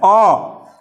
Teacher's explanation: मध्य स्वर जो बीच से, जीभ के बीचों बीच से साउंड निकलता